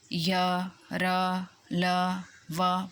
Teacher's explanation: क्योंकि ये अंत्यस्य व्यंजन है जो स्वरों के बीच में और व्यंजनों की स्थितियों के बीच में आते हैं, उसको अंत्यस्य व्यंजन कहते हैं। इनके उच्चारण में स्पर्श बहुत कम होता है, इसलिए ये कुछ कुछ स्वर से लगते हैं।